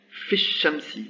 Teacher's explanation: la voyelle de liaison n'est plus prononcé